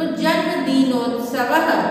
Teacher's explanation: जन्मदिनोत्सवः विसर्ग है, इसलिए विसर्ग का उच्चारण ह की तरह होता है, उस पर जोर डालते हैं, बट उसमें लिखने में ह नहीं लिखना है, विसर्ग को ह की तरह उच्चारण मात्र करते हैं।